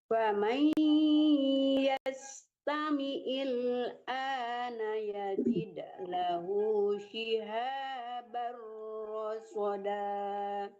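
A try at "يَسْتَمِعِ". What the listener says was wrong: Jangan tamiil ya, tamiil. Jangan il tapi ail, tamiil dilenturkan dari tengah-tengah tenggorokan.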